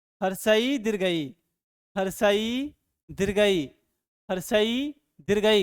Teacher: हर्षई तालु के पास टकरा रहा है बच्चों